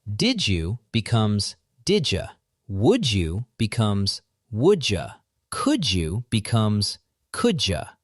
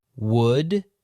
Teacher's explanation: when a D or T at the end of a word meets a Y sound at the start of the next word, the U in did you, they collide and produce a j or a ch sound. The mouth takes a shortcut. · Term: J sound